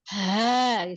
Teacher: Ha yang kelihatannya kayak kedengarannya kayak tebal gitu, itu didorongnya dari dada.